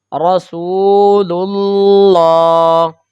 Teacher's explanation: تو جب پیش کی حرکت کو ہم لام کے ساتھ ملائیں گے تو یہ چونکہ اس میں جلالت اللہ کا لام ہے تو اس صورت میں ہم اس لام کو پر پڑھیں گے، کیونکہ اس سے پہلے حرف پر پیش کی حرکت آ گئی ہے